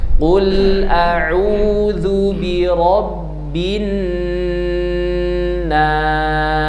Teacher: nun tasydid disebut dengan gunnah akmal, gunnah yang paling kuat.